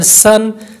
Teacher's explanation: سین پڑھیں گے تو سیٹی کی آواز پیدا ہوگی